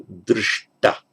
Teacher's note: it's the palatal sh plus ta. They both become retroflex.